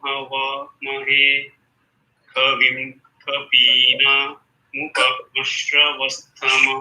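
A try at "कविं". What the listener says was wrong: Only one mistake for Kavim. So Ka is Anudata. Kavim Lala. No, Ka is Anudata. Kavim Lala.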